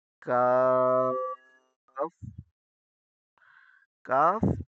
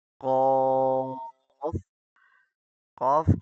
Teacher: کاف کچھ آگے ہے، اور قوف سے مگر زیادہ دور نہیں ہے